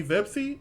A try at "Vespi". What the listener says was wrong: Vespi. dyslexia is kicking in because you keep switching your P and your S.